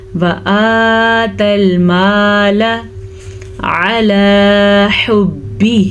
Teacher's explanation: حمزہ کھڑی زبر آ، لیکن لام کو لمبا نہیں کرنا، لام زبر لا